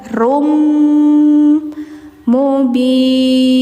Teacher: tanwin menghadapi mim ya masukkan langsung suara N ke m